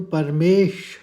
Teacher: परमेश, एक हल्का कटा हुआ श निकाला परमेश